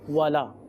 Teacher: یہ وی نہیں ہے، یہ واو ہے، اس میں ہونٹ مکمل گول ہوں گے